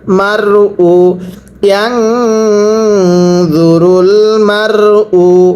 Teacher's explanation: র সাকিনের পূর্বে জবর র সাকিন মোটা করে পড়তে হয়।